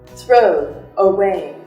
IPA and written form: θrəʊ əˈweɪ (throw away)